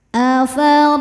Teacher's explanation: Huruf ro dibaca secara tafhim karena ro berharakat fathah. Cara bacanya ro dibaca dengan tebal.